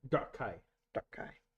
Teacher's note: Emphasis on the first syllable, a little bit of a glottal stop after